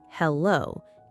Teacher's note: For hello, go with hello, keeping the first syllable strong and clear.